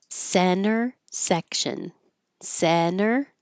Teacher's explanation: the T after the N in the unstressed syllable can disappear because when I put my tongue up for the N s I'm just not releasing center.